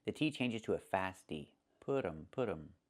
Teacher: And you hear um instead of them. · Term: reduction